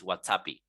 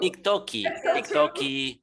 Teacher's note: the Brazilian Portuguese, they kind of modify all these foreign terms, adding like a final vocal at the end